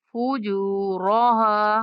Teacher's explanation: را کو موٹی آواز میں اور ہا کے بعد الف مدہ ہے تو ہا کو 1 سیکنڈ تک لمبا کر کے پڑھنا ہے